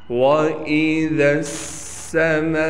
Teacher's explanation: میم کے بعد الف ہونے کی وجہ سے کھینچیں گے اور الف پر مد ہونے کی وجہ سے میم کو 5 الف کے مقدار کھینچیں گے، حمزہ کو بالکل نہیں کھینچنا۔